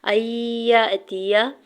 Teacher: یا کے زبر کو حمزہ ساکن کے ساتھ ملاتے ہوئے جھٹکا دیں گے